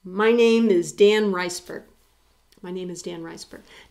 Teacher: notice there's no gap between my and name it's just one continuous thing